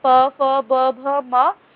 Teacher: औष्ठय मतलब कि अपने होठ से होठ टच होते हैं। जब हम प वर्ग बोलते हैं तब।